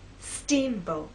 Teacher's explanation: our voice will be higher at the beginning and lower in the second part